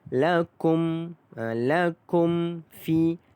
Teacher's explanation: Di sini dia tidak ada dengung kerana di sini melibatkan izhar syafawi.